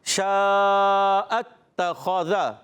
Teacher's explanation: خا کا مخرج ہے حلق کا اوپر والا حصہ. غین اور خا حلق کے اوپر والے حصے سے ادا ہوتے ہیں.